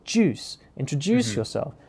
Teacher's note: you've also got a stressed word there, which is introduce. And then it's one of the syllables within that word, juice